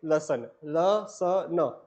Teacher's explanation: ल, स, न। ये तीनों किससे होते हैं? बत्स से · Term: वत्स्य